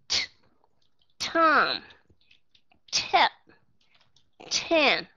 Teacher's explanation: ở trong chữ âm t các bạn sẽ bật hơi ra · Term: aspiration